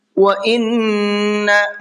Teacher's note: وَإِنَّ نون کے اوپر تشدید ہے تو یہاں پر غنہ کریں گے